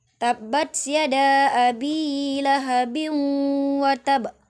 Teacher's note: Tanwin bertemu dengan waw, dibaca berdengung. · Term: idgham bi gunnah